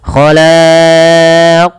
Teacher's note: ada qalqalah pada lafal huruf qaf dan wajib dipantulkan sebagaimana huruf dal. Dan kesalahan yang sama, kesalahannya yang membaca qalqalah itu tidak mantul dan menambah hamzah.